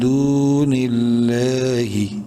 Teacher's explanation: لفظ اللہ سے پہلے نون کے نیچے زیر ہے، لام کو بولڈ نہیں کرنا